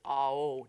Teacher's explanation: it's actually supposed to be pronounced Ao, so no glottal stop